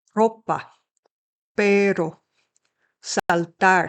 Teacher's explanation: A single letter R is really more of a flap of the tongue